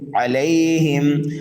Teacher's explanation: عین کو بھی جلدی پڑھنا ہے، لام کو بھی جلدی پڑھنا ہے، اور ہم کے اندر اظہار کرنا ہے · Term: اظہار شفوی